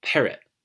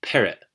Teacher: This one right here, which is the descending slope, means stress the second to last syllable in the word and do a glottal stop